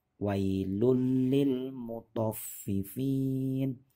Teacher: ada tanwin bertemu dengan lam ini tidak didengungkan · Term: Idgham bilagunnah